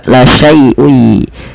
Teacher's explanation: Cara membacanya adalah kita memasukkan tanwinnya pada lafal ketemu, masukkan kepada huruf ya sehingga suara nun sukunnya hilang. Kan awalnya la syai'un, ada nun dimatikan, ketemu ya langsung ke ya la syai'ui. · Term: idgham bi gunnah